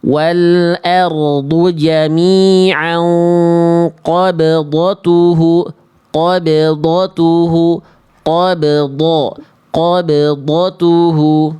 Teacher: qafnya tebal, banya tipis, dotnya tebal.